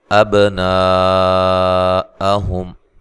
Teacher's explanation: با پہ قلقلہ کرنا ہے، اور نون پہ جو مد ہے یہ مد واجب ہے، اس کو مد متصل بھی کہا جاتا ہے۔